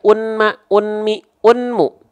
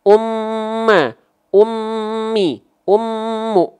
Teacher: si bunyi nnya masuk ke bunyi m